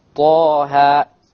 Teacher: letters where you are supposed to elongate to have a mad of 2 harakas. Not more, not less.